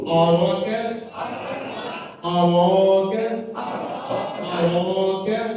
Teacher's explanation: را کو موٹا پڑھ رہے ہیں، کھینچ رہے ہیں، کاف کو باریک پڑھنا